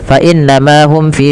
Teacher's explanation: Inna, ditahan suara bunyi n ya, sepanjang dua harakat karena ia bacaan gunnah. Beberapa kesalahan yang terjadi tidak menahan gunnahnya hanya lewat saja.